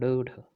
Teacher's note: उच्छिण होते हैं जिनके उच्चारण जीभ के ऊपर उठकर झटके के साथ है